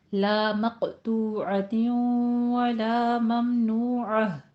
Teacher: ممنوعہ میں میم ساکن ہے، اظہار شفوی کرنا ہے۔